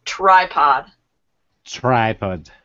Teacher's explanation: when you have your T, you start with your lips kind of back, T, but then you have to get your lips in place for that R sound.